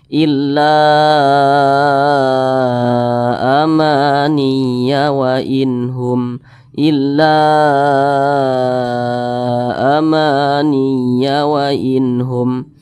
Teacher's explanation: Mad Jaiz munfasil itu boleh dibaca empat harakat hingga 5 harakat boleh dibaca empat ketukan boleh juga dipanjangkan hingga lima ketukan nah · mad jaiz munfasil itu boleh dibaca 4 harokat hingga 5 harokat